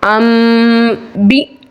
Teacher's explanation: हमजा साकना को हमेशा झड़का देके पढ़ते हैं